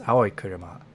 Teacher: So the pitches of the two words are just maintained next to each other.